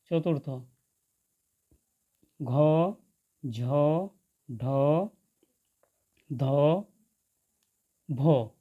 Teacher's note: এই বর্ণগুলি উচ্চারণের সময় শ্বাসবায়ু বেশি জোরে বাহির হয়, তাই এই বর্ণগুলিকে মহাপ্রাণ বর্ণ বলে।